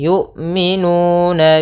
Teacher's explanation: nuna ada dhammah bertemu waw, yaitu bacaan mad tabi'i, panjangnya 2 harakat.